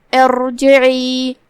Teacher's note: یہاں را کا حکم ہے تفخیم کیونکہ اس سے پہلے والا حرف ہے حمزۃ وصل، تو ہم یہ کلمہ کو ایسے ادا کریں گے ارجعی. یہاں حرف العین ہے، ہم اسے حلق کے درمیان والے حصے سے ادا کریں گے